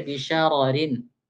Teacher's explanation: apabila ra pertama itu tafkhim, yang kedua tarqiq.